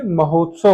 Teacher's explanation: हो पे ज्यादा बल जा रहा है